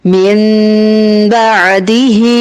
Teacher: اگر الگ الگ پڑھیں گے تو اظہار ہوگا، نون ساکن کے بعد حرف با آنے کی وجہ سے ملا کے پڑھیں گے تو اقلاب ہوگا، نون کی آواز میم میں بدل جائے گی